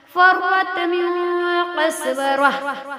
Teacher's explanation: فرت میں را پر ہوگی، قسورہ میں بھی را پر ہوگی